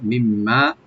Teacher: last মিমটাকে একটু double করে গুণনা করে একালিফ টানবো